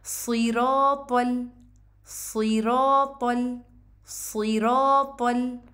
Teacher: सीन की तरह भी नहीं पढ़ना और कसरा की आवाज़ को ए भी नहीं करना, बल्कि ई ही पढ़ना है